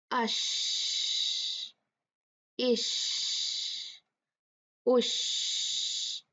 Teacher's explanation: शीन की एक special quality है जिसे कहा जाता है तफशी, तफशी, यानी जैसे स्प्रे के जैसे आवाज निकलती है, आवाज फैलती है, ये इसकी स्पेशल क्वालिटी है।